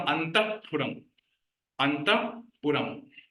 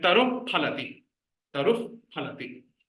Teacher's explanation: Upadmaniya, there is somewhat like a phakara sound.